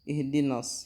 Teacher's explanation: Yang pertama, kita perhatikan na dan sod di sini. Huruf na adalah huruf yang tipis, sementara sod adalah huruf yang tebal. Ketika kita mau menebalkan huruf sod, ini tidak boleh ditebalkannya dari na.